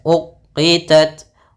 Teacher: ta sifat hamas dan sifat syiddahnya. Langkah pertama syiddah dulu baru hamasnya.